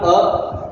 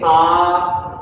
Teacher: ह्रस्व स्वर से दो गुना समय लगता है उसे हम कह सकते हैं दीर्घ स्वर। मतलब दो बार पलक झपकती है इतने समय में आप दीर्घ स्वर का उच्चारण कर सकते हैं।